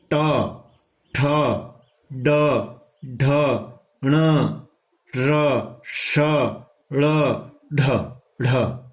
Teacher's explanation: ये जो वर्ण है इनका उच्चारण स्थान है मूर्धा। और अण, मूर्धा के साथ साथ जो ण है उसका क्या है, नासिका, नाक से भी बोला जाता है, जो पांचवा अक्षर है ट वर्ग का।